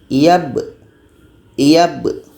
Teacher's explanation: Iyab, iyab. Jadi sebelum kita masuk kepada qalqalah atau pantulan be-nya itu, kita pasti akan tahan dulu bunyi ba.